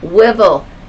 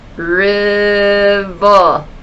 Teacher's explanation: remember that good growl sound there in the back of your throat for R. River. Oh, we got the first R, the R at the beginning of the word.